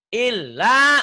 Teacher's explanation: Illa, lanya yang ditahan panjang.